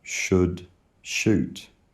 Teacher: O starts with the unstressed vowel about, open. And oo starts with the should vowel